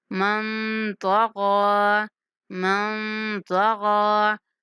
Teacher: نون پر اخفا کرنا ہے، تو اور غین دونوں کو موٹا کر کے پڑھنا ہے